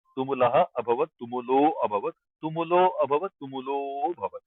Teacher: You just extend the previous sound by one extra count, extra matra, so that it is implied that akara comes up.